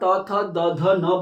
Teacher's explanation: क्योंकि जब भी आप त थ द ध न बोलोगे, तो आपकी जो जीवा है, आपकी जो जीभ है, वो कहाँ टच करेगी, दांतों को टच करेगी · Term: दंत्य वर्ण